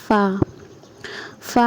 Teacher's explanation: اس کے بعد ہے فا ادا ہوتا ہے تو اوپر کے جو دانت ہے وہ نیچے والے ہونٹوں کو ٹچ کرتے ہیں اور وہاں سے فا ادا ہوتا ہے